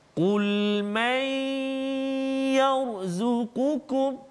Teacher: Yang ni kita tengok contoh nun mati pula bertemu dengan ya. Maka kita masukkan bunyi nun ke dalam ya dengan dengung dua harakat.